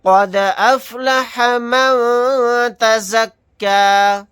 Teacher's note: دال ساکن ہے تو یہاں پر قلقلہ کر کے پڑھیں گے